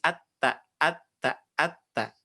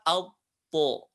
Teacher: kalau to itu tebal dengan cara mengangkat bagian pangkal lisannya. Pangkal lisannya diangkat dan nutup ke langit langit bagian depannya.